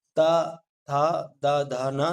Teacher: दंत से उच्चारण होने के कारण इन्हें कहा जाता है दंत वर्ण